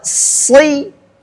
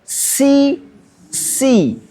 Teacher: membedakan shad dan sin adalah sifat istifalnya sin. Nah, dan infitahnya sin.